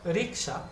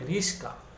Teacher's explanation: যেমন রিক্সা, অনেকে বলে রিস্কা, তাহলে ক আর স নিজেদের মধ্যে স্থান বিনিময় করে উচ্চারিত হবে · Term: ধ্বনি বিপর্যয়